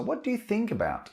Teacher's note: i'm increasing or rising my intonation on the verb